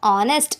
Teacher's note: honest begin with a vowel sound as the initial consonant H is not pronounced. அதாவது ஆர், honest அப்படின்னு நம்ம சொல்லும்போது அதை vowel சவுண்டான அ அப்படின்னு யூஸ் பண்ணி தான் நம்ம அதை சொல்கிறோம்.